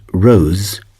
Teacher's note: In the word rose, we use green to represent the Z that is more like the buzzing of a bee. The International Phonetic Alphabet symbol for it is the normal Z from the Latin alphabet.